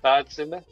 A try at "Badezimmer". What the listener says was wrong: Nearly, Badezimmer. There's the E and the E is pronounced. Not just pronounced, but like emphasized on.